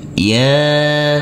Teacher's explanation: Huruf ya kita baca panjang dengan panjang 2 harokat, karena di atasnya ada huruf alif kecil yang berdiri tegak lurus.